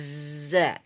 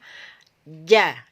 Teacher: ini kalau sifat jahar itu berkaitan dengan nafas nafas yang keluar jadi nafasnya itu tidak boleh bocor harus terhenti ketika kita mengucapkan Jim atau diberi harakat e fathah menjadi ja jadi nafasnya harus berhenti